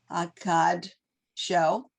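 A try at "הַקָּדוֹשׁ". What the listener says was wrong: No. The dalet goes with the vowel here.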